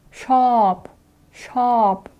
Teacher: Здесь у нас будет нисходящий тон, то есть shop, shop.